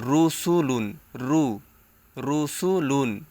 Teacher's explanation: দুই পেশ লুন রুসুলুন এখানে অনেক স্টুডেন্ট ভুল করে এখানে বলে রসুলুন রসুলুন র বললে র জবর র হয়ে যায় এখানে তাহলে আর পেশটা থাকলো না সো রসুলুন বলা যায় যাবে